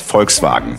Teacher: the V in German can be pronounced as a V, but in this case, it's an F